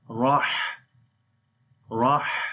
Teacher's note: Now we read ra with fatha, and which we connect with the ha. Here will be ra in heavy sound